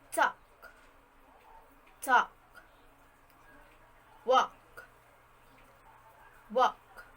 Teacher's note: middle english pre-consonantal al was lost after first becoming a vowel · the al phoneme was disappeared and pronounced as the half O sound